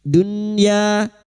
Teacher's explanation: bertemunya nun sukun dengan huruf ya atau wau namanya bacaan izhar wajib Nun sukun dibaca jelas tanpa mendengung. Dunya ya fathah diuti alif du harakat mad thabi'i. · Fid dunya nun sukun bertemu ya idhar wajib, nun sukun dibaca jelas tanpa mendengung